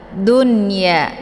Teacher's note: Jadi nggak usah dibaca duya ya, seperti bacaan idgham, karena ini hukum bacaannya adalah jelas idhar, atau biasa dikenal dengan idhar mamnuk ya.